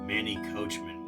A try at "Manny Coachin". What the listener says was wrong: It said Coachin, not Coachman. You put an M in there. Coach- Manny Coachin.